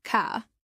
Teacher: Australians often drop the R sound like in the word car.